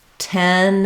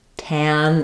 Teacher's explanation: You don't want it to open too far, so I need to make a clear difference between 10 is open a middle amount and tan is open. For the ah vowel is more open.